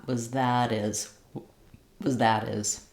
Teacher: we'll drop the H of his and we flap the T of that